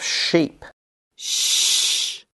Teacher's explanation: the blade of the tongue makes contact with the area just behind the alvea ridge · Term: Palatoalveolar